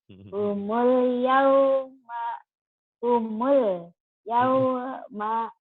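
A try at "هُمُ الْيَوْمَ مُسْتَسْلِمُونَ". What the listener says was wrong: udah bagus tapi jangan putus-putus ya. Humul. Humul, humul, yaumamus. Humul, yaumamus. Taslimun.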